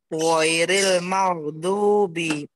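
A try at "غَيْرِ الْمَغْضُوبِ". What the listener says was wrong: Coba tidak boleh ada ge-nya. Tidak boleh dilepas ge. Sebelum jenengan apa habis wain, wain sukun habis baru ke dzad. Tiap wain sukun, jadi tidak boleh ditawalkan, tidak boleh dipantulkan.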